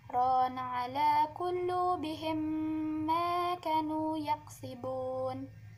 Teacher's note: Ketika bacaan mim mati bertemu dengan mim berharokat atau hidup, cara bacaan hukum idgham mithlain yaitu meleburkan huruf mim mati dengan huruf mim berharokat atau hidup, dibaca sambil didengungkan dan ditahan sekitar 2-3 harokat.